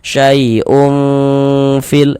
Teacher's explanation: Jadi di bagian ungnya itu suaranya itu kita tahan, kita panjangkan sejenak sepanjang 2 harokat. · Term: ikhfa hakiki